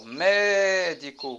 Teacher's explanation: Então, o ME é a sílaba forte, certo? Então, essa sílaba é a sílaba tônica. · Sílaba tônica, me, o di é sílaba átona e o có é sílaba átona.